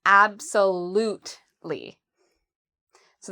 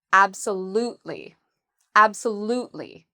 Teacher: So how do we pronounce absolutely? So the stress is on the third syllable.